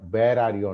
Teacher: బెంగాలీ వాళ్ళు వా పలకలేరండి. వాళ్ళు ఎక్కడ వా వచ్చినా సరే బా అంటారు.